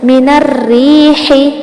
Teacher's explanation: من الریح، یہاں پر دیکھیں یا ساکن سے پہلے جو را ہے وہ را مشدد ہے، ساتھ اس کے نیچے زیر ہے تو یہ بھی باریک ہوئی۔ من الریح، موٹا نہیں پڑھنا ان را کو، ٹھیک ہے بالکل بھی۔